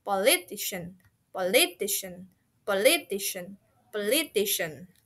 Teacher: Politician similar to technology and production, it has emphasis in the middle of the word or syllable itself. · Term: middle stress